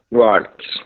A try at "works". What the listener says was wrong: Isso, garoto.